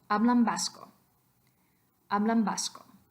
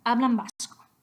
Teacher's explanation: If you're saying it just sort of naturally, that N has turned into the allophone M.